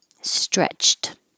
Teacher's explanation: This ED sounds like a T because the CH is the last sound in the word before you put the ED on.